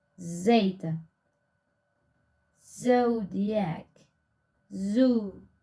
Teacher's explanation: Spelling system of Z. Alveolar fricative voiced.